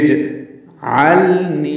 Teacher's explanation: جیم ساکن ہے، اس پہ قلقلہ ہوتا ہے، جیم کو ہلا کر ادا کرنا ہے